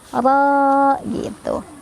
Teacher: kalau berhenti jadi fathah saja dan dibaca panjang 2 harokat. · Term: mad iwad